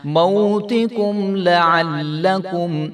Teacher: ہم کر چکے ہیں کہ اس کو لعلکم نہیں کریں گے، لام کو ہم نے لمبا نہیں ہونے دینا